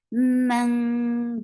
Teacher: you are hiding the sound of noon, and you are going towards the makhraj of ta, and you are keeping the sound in your nose. This is the mechanism of your ikhfa.